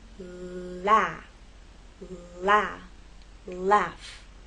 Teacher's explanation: as you move into the vowel sound that tip of the tongue is going to drop down